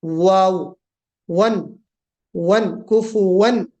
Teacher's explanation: دوسری چیز یہ کہ واؤ کفون پڑھتے وقت منہ کا گول ہونا ضروری ہے، واؤ کا جو مخرج ہے وہ ہے ہی یہی کہ منہ کو گول کر کے، ہے نا, جو اردو کتابوں میں آپ نے پڑھا ہوگا, ہونٹوں کو ناتمام ملانا, دونوں ہونٹوں کو گول کرتے ہوئے ناتمام ملانا, یعنی کہیں ٹچ نہیں کرنا ہونٹوں کو, خالی ہونٹوں کو گول کرنا ہے